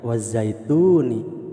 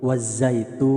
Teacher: apabila dihentikan tidak dibaca wazaituni, tapi wazaitun, panjang. Bahkan panjangnya lebih dari mad asli atau mad tobe. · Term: mad arid lis sukun